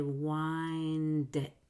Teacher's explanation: Dit, with a very light tongue on the D.